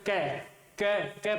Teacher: और जब अपन क वर्ण क का उच्चारण करेंगे तो क वर्ण का उच्चारण करने पर क क क बोलेंगे तो यहाँ जो कंठ को जीवा स्पर्श करके मुख से बाहर निकलेगी। जीवा का कंठ से स्पर्श होता है और जो श्वास वायु होती है वो जीवा के सारे चल करके ही मुख से बाहर निकलती है।